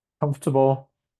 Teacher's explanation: it's the first syllable that gets the stress